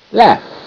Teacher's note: AU is making the short A sound, ah, ah. So that's irregular for AU because the regular sound for AU is ah.